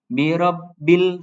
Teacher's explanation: jadi harus ditahan enggak boleh dipantulkan untuk lam sukun · ketika lam berharokat sukun maka tidak boleh dipantulkan